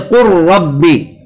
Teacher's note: इसी तरह से कुर रब्बी, रा का ये लाम का रा में इदगाम होता है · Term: इदगाम मुतकारिबैन